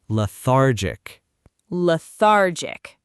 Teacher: Notice the stress is on the middle syllable.